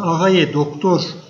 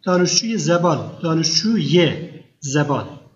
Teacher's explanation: öndeki kelime Eğer e son harfi ünlü bir harfle biterse Araya bir kaynaştırma sesi gelir y sesi gelir